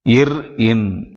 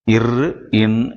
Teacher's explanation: இறுதியாக இர் இன் என்று சொல்லக்கூடிய எழுத்துக்கள் மேல்வாயை நாக்கின் நுனி மிகவும் பொருந்துவதால் பிறக்கின்றன